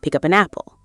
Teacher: The P at the end of up flows into the A of an. And the N at the end of an flows into the A of apple. · The K at the end of pick flows directly into the U of up. The P at the end of up flows into the A of an.